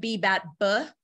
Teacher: What you're actually producing linguistically is a B with a schwa sound at the end, which just means unstressed vowel, because it's hard to produce something like a stop without a stop, which is what a B is.